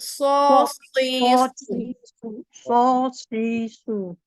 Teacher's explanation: Okey, huruf sod tebalkan sedikit.